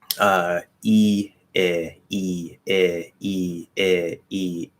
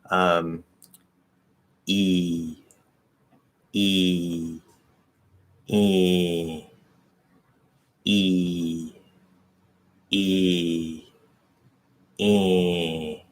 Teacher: So E, no nasal, E, tiny nasal, and then I'll just do a full on nasal E.